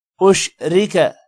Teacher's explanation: را کو موٹا نہیں کریں گے کیونکہ را کے نیچے زیر ہے۔ را کو لمبا بھی نہیں کرنا، کاف کو بھی لمبا نہیں کریں گے۔